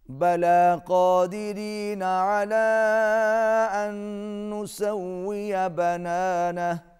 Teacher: بلا قادرین، قاف موٹا، را باریک، علی اس کے اوپر چھوٹی مد ہے، کھینچ کے پڑھیں گے، ان نسویہ، نون پر غنہ ہوگا اور واو پر ہونٹ گول ہوں گے